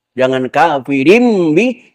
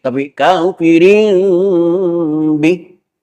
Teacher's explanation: tidak menekankan kepada suara mim 100% Tapi ada ikhfanya bukan kafirin tapi kafirin Bih jadi menutupnya terkatupnya bibir itu pelan · suara mim 100% Tapi ada ikhfanya bukan kafirin tapi kafirin Bih jadi menutupnya terkatupnya bibir itu pelan pelan enggak sekaligus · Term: iqlab